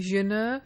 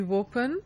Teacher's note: The initial vowels in some varieties of the subcontinent are preceded by a glide. So inner will be yinner, above will be, open will be wopen.